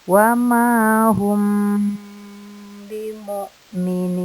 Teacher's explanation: Di sini di bacaan humbi ada mim sukun bertemu ba. Dinamakan juga hukum ikhfa safawi. Dibaca dengung sekitar kurang lebih 4 ketukan.